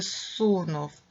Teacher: префікс з перед глухими вимовляємо як с